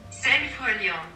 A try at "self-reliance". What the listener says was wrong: Tu me l'as prononcé en français là, self-reliant.